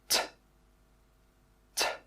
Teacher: This sound is pronounced t, t. This is an unvoiced sound, so when you make this sound, your throat does not vibrate. T, t. When we make the t sound, we first stop the air from coming out of our mouth with our tongue.